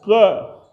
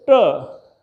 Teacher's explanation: जैसे ही जीभ को आप पीछे लाएंगे ट, जीभ मूर्धन में चली जाएगी और ट की आवाज़ आएगी।